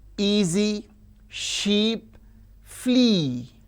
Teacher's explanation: e is front close unrounded